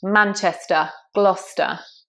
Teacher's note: those ERs in English are normally schwa.